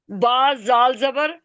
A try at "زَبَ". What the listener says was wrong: با نہیں، زال با. زال پہلے ہے نا. زال کو با سے ملانا ہے نا. زال با زبر.